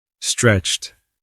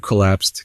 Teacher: T, unvoiced, soft T sound.